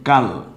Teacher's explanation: লটা হবে হসন্তের মতো, যেহেতু যজম হসন্তের কাজ করে